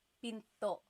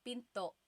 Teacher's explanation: Do you hear the glottal stop when I say pinto?